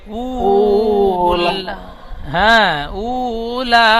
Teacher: উ ওয়াও মধ্যে টান দিয়ে পড়তে হবে, তারপর লাম খাড়া যাবারও টান দেবেন।